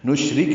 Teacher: نشرک را باریک ہے، کاف باریک ہے، جلدی ادا کریں گے